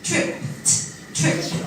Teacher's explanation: if the preceding consonant is unvoiced, like a P, tripped, tripped with a T.